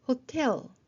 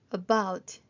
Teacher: hotel 뒤에 강세가 있고요. about 뒤에 강세가 있습니다.